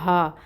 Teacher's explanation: ہا جو ہے یہ اقصا الحلق سے ادا ہوتی ہے، سینے کی طرف سے بھاری ہوتی ہے اس کی آواز